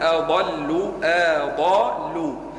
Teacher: كان الضاد مفخم الباقي مرقق